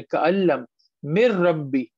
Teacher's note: نون چلا گیا را میں، کوئی چھپانا ہے ہی نہیں